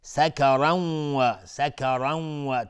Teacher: تنوین بعدش واو ادغام با غنه و را هم حکمش استعلاس چون تنوین نصب میشه و تنوین گفتیم بعدش واو ادغام با غنه.